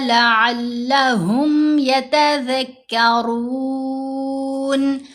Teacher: را کو موٹا پڑھیں گے اور 3 سے 4 حرکات کی مقدار ہم لمبا کر سکتے ہیں مد عارض لگا کر۔ نون کو ساکن کر دیں گے، یتذکرون نہیں کرنا، نون کے اوپر زبر نہیں پڑھنی، کیونکہ آیت مکمل ہو رہی ہے۔